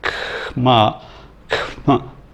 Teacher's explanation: The KH is actually a K sound, but the H, as in a lot of consonants in transcription, means it's aspirated rather than unaspirated. There's a K sound which is unaspirated and a K sound which is aspirated.